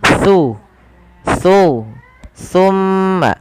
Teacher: Huruf sa ini tempat keluarnya adalah ujung lidah bertemu dengan gigi seri atas. Jadi ketika kita melafalkan sa, pertemukan antara lidah kita, ujung lidah kita dengan gigi seri atas.